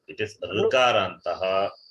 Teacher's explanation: It is cerebral. The tongue touches the roof of the mouth. So there is no rounding of the lips. When you say rukarantaha means your lips will round.